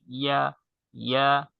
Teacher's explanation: ইয়া জিহ্বার মধ্যখান তার বরাবর উপরের তালুর সঙ্গে লাগিয়ে উচ্চারণ করতে হবে,